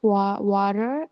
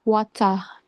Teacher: The T is pronounced sharply, not like the soft American D. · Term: clear T sound